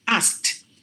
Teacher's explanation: just replace the Ed with the T sound